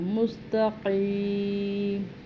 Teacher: قاف کو بھی حلق سے اور موٹا پر پڑھنا ہے